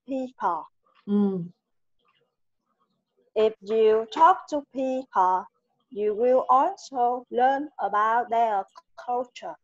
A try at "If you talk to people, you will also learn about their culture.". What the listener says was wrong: Chỉ có điều là cái phần ngữ điệu nghe chưa được hay lắm. Nghe song với máy đọc thêm. Đúng rồi, hơi yếu. Thiếu âm đuôi nữa đó. Âm sờ, âm giờ rồi đó bị thiếu.